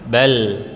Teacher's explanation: La ini dalam bahasa Arab terdengar lebih lembut dan dia ketika sukun itu masih ada aliran suaranya